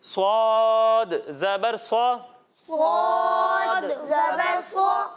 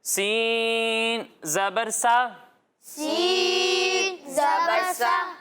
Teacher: صاد کو موٹا کر کے پڑھیں گے اور سین کو ہم باریک پڑھیں گے اور ان دونوں میں سیٹی کی آواز آئے گی.